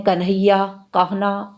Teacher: इसीलिए इन्हें वर्ष्य में सम्मिलित किया गया है। न का महाप्राण न है, जो हिंदी में शब्द होते हैं कन्हैया, कहना आदि शब्दों में उच्चारित होता है